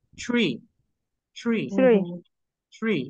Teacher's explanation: primero el sonido de che y después la R. Y se va a escuchar tree.